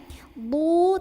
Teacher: D dari sisi lidah ketemu gigi geraham kiri atau kanan